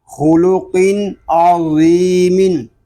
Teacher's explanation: یہاں خا، قاف اور ضا یہ حروف اس لیے پر ہیں کہ یہ تینوں حروف حروف مستعلیہ میں سے ہیں